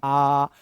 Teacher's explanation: आ तो ये मैक्सिमम खुलेगा। यानी कि औरों की अपेक्षा ये सबसे ज्यादा खुलता हुआ आपको दिखाई देगा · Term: विवृत्त